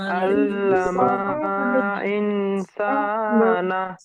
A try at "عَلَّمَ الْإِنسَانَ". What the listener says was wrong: আল্লামা নেই, দেখেন এখানে মিম লাম জবর মাল আছে। আল্লামাল ইনসানা। আচ্ছা, আমাকে বলতে দেন, নুন সাকিনের পরে সিন এসে তাহলে কি কিসে কায়দা আছে? ইকফার গুন্না আছে। তাহলে এখানে গুন্না দেবেন। আল্লামাল ইনসানা।